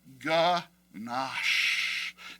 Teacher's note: it is mandatory to stretch out the sh sound at the end of the word